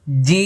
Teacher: শেষে দেখেন ঠোট বন্ধ হবে কারণ এটার শেষে মিম আছে জি এই যে দাঁত লাগবে না জি লক্ষা করুন জিম দেখেছেন ঠোট কিভাবে লেগে গেছে কারণ জিমের শেষে মিম যেখানে মিম সেখানে মুখ বন্ধ যেখানে নুন সেখানে মুখ ফাঁকা মনে রাখতে হবে আমি আবার বলছি জিব্বার মধ্যখান উপরে তালুর সঙ্গে লেগে যাচ্ছে।